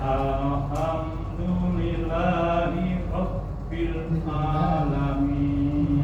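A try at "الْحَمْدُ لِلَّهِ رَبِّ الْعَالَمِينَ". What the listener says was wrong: Ya, masih sama huruf H. H-nya masih dengan H. Jadi kayak yang asal semalam. Yang kedua ini lam jalalahnya kurang tasdid. Lillahi. Nggak boleh lillahi tapi lillahi. Ada tasdid. Jadi untuk huruf tadi ya ha. Tambah lagi huruf ain. Ainnya itu harusnya kedengarannya hamzah. Alamin, bukan alamin tapi alamin.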